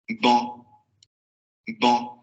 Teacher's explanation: por la nasalización entendemos que es de la variante estándar de París